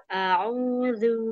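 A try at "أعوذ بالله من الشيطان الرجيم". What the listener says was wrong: Masih kurang monjong zunya. A'udzu, zu, zu, zu.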